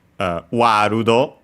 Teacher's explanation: World becomes Warudo. with a longer vowel. As usual, the long A, again because we have the sound and so the closest one, A, and then also long, as already mentioned.